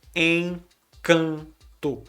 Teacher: Encanto. E no final a gente substitui o O na fala por um som de U. Então, encanto.